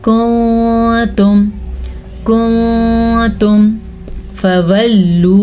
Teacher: नून साकिन के बाद ता हरूफ इख्फा में से है तो हम नून साकिन पे इख्फा करेंगे, यानी कि नून को छुपे हुए गुन्ने के साथ पढ़ेंगे।